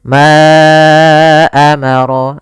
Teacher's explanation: kemudian Ma amarallahu Bih di sini ada Mad Jaiz munfasil yaitu Mad yang terjadi apabila ada huruf hamzah datang setelah huruf mad maka di sini panjang untuk Ma adalah 4 harakat atau 5 harakat